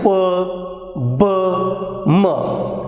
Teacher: So two articulators, that is lower lip and upper lips, comes together and when they are separated, when they are drawn apart, the burst like sound, a burst like consonant can be heard. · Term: bilabial sounds